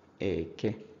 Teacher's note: So Eke is low high. Eke. Now notice the direction of the tone mark.